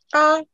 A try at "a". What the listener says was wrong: Avec le coup de glotte. Oui, ne tue pas que A. Dis seulement A. Il faut faire sec. Parce que si tu tues, ça sera comme si c'était dédoublé. Ce serait 2A.